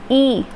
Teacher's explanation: ई हम आगे से बोल रहे हैं, जीभ के आगे का प्रयोग हो पा रहा है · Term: अग्र स्वर